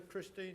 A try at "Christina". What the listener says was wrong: It's Christina. Don't forget the A.